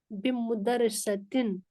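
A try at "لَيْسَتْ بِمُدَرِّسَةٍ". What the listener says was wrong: مدرس. پیش ہوتا ہے مدرس میں, مدرسے پہ نہیں ہوتا پیش. مدرس.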